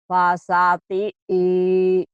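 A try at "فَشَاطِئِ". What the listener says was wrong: Fasya. Fasyati'i. Pendek. Fasyati'i. Fasyati'inya. Shinnya hutang ya Bu ya. Shin belum keluar. masih kurang ya shinnya ya.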